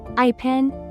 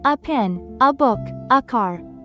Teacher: It's a very short unstressed sound like the a in sofa or the u in umbrella. It's called the schwah sound.